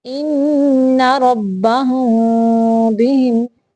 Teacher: ہونٹوں کو آپس میں چپکائیں گے نہیں لیکن تھوڑا سا فاصلہ رکھ کے ادا کریں گے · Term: اخفاء شفوی